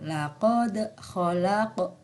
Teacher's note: ada huruf Dal di sukun termasuk hukum bacaan Qolqolah Sugro cara membacanya dengan memantul